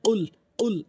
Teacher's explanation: জিহ্বার মাঝখানটা উপরে তালুর সঙ্গে লাগিয়ে উচ্চারণ করতে হবে ধাক্কা দিয়ে